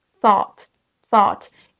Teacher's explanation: Il faut démarrer avec votre langue au niveau de vos dents supérieures et ensuite faire un son S, mais avec la langue qui est collée au-dessus au niveau des dents. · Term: son TH